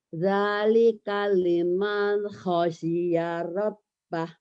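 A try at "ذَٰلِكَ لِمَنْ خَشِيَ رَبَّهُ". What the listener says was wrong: Shinnya dilatih ya Bu. Shin. Dzalika liman khasyya rabbah.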